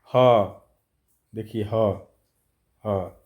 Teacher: ह ध्वनि के उच्चारण में स्वर यंत्र मुख अर्थात कंकाल का प्रयोग होता है। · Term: काकल्य वर्ण